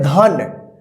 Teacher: last वाला जो अक्षर है ना उसमें अ का साउंड उच्चारण नहीं हो रहा है